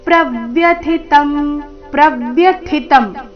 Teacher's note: ಪ್ರವ್ಯಥಿತಂ ಥಿ ಮಹಾಪ್ರಾಣ, ಮುಂದಿನ ತ ಅಲ್ಪ ಪ್ರಾಣ.